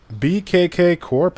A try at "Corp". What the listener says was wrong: That word C-O-R-P is pronounced core, not corp.